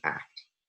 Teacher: And following that a in the same syllable, we have two consonants, a velar stop and a alveolar stop, both voiceless. So we have what we would call in this case, a complex coda.